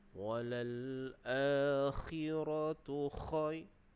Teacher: huruf kha tu makhrajnya di hujung kerongkong. Jadi bunyinya di hujung.